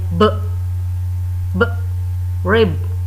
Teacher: close lips to form a line, then voice sound like b